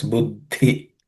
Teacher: Buddhi, in the word buddhi, the second letter, which is a compound letter made up of id and ud. And the second of those compound letters is aspirated consonant, so it's buddhi.